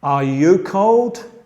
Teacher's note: Con la entonación va subiendo en el fin, como en el español cuando preguntas.